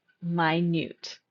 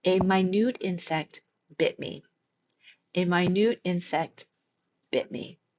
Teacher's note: The second pronunciation stresses the second part of the word minute.